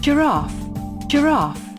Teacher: Notice how the G stops the air at the beginning.